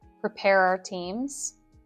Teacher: Often the word our can sound like are in rapid speech.